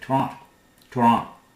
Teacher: They do not pronounce this last T, Toronto.